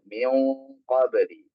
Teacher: Oh, itu namanya ikhfa. Kalau nun sukun ketemu qof, maka jadinya samar. Kemudian ditebalkan karena huruf qof itu huruf tebal